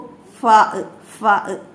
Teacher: രണ്ടു ചുണ്ടുകൾ താഴെ ചുണ്ടും മേലെ മുൻപല്ലുകളുടെ തലയും പറഞ്ഞു നോക്കൂ ഫാഹ് ഫാഹ് താഴത്തെ ചുണ്ടുമലേക്ക് മേലെ മുൻപല്ലിന്റെ തല ഇങ്ങനെ വരുന്നത് കാണാം